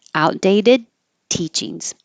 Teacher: There's I made a connection here, not because there's any sound changes, but the D and the T are made in the same place. The tongue touches behind the top teeth. So outdated teachings.